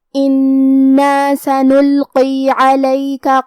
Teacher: کلمت انا میں حرف النون کو ہمیں 2 حرف کے برابر پڑھنا ہے کیونکہ اس پہ تشدید ہے · کلمت سنلقی، یہاں لام ساکن ہے تو ہم حرف اللام کو ظاہر کریں گے، قاف کو ہم موٹی آواز میں پڑھیں گے۔